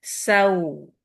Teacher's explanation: जिस तरह दम्मा के लिए होंठ राउंड होंगे इस तरह वाव के लिए भी होंठ राउंड होते हैं